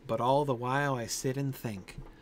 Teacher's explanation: but is just as stressed as all